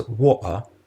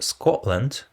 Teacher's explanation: The alveolar plosive t is substituted with a glottal stop before another consonant or a weak vowel.